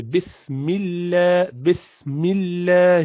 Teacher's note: you do not pronounce Allah with roundedness means you do not make it jelena you pronounce it simple